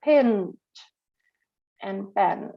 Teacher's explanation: the vowel is influenced by the nasal sound behind